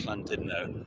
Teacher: when there are two L's, it's the sound where you kind of tense the sides of your tongue